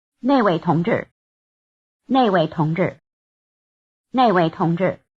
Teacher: The word for that is the falling tone syllable nèi.